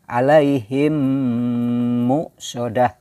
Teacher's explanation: bunyi mim ditahan kemudian dimasukkan ke dalam huruf yang ada di depannya, yaitu huruf mim lagi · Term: idgham mimi